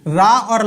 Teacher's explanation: रा और ला का वर्त या दंत मूल से होता है। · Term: वर्त या फिर दंत मूल